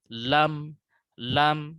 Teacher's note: tepi lidah ke ujung lidahnya seperti ini posisi huruf lam nah ujung lidahnya ini menempel pada gusi dari gigi bagian atas gigi seri